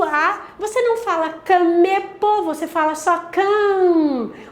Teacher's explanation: o A, ele não é livre, ele vai fazer esse nasal